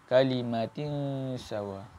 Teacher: Kalimatin sawa tu tanwin bertemu dengan sin, hukum dia ikhfa. Menyembunyikan huruf nun kepada sin.